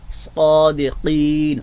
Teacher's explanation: صادقین میں آپ دیکھ رہے ہیں کہ حرف صاد جو ہے اس کا پر پڑھنا، موٹا پڑھنا اس کی صفت خاصہ ہے، یعنی مخرج کا حصہ ہے۔